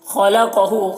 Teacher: خا اور قاف دونوں حروف مستعلیہ میں سے ہے، دونوں کو پر پڑھیں گے